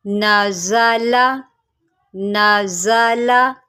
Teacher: دوبارہ کرتی ہوں، نون زبرنا، زا زبر زا، نازا، لام زبرلا، نازالا نازالا۔ دیکھیں زا جو ہوتا ہے یہ حروف صفیریہ میں سے ہوتا ہے اور اس کی سیٹی ہوتی ہے